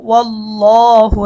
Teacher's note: এখানে আমরা লামটাকে মোটা করব ল মোটা করে পড়ব